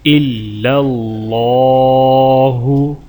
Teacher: اللہ کے نام کو موٹا کریں گے